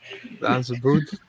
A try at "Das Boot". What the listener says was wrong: No, not boot. Boat.